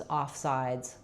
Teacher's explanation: It's going to be longer. We have our I diphthong that slides. And then letter S at the end is going to say the Z sound. · In offsides, we stress on sides. It's going to be longer. We have our I diphthong that slides.